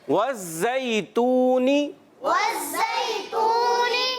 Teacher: زا کی ادائیگی کلیئر کریں گے سیٹی کے ساتھ